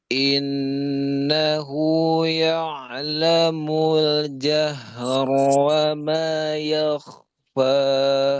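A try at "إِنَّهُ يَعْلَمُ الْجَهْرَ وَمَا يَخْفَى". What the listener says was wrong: Innahu la. Jadi la-nya jadi tipis ya. Tadi sedikit ya'lamu, tapi ya'lamu. Ya'la tipis.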